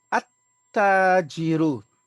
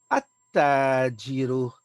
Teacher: There is no joining, there is no sukun onto the lam. We go directly onto the ta.